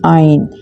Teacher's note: Ain comes from the middle part of the throat.